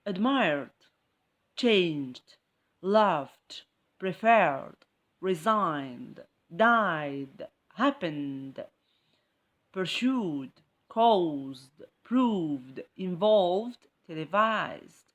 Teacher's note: All these words end with the ed ending, but I don't hear ed. I hear just the d at the end.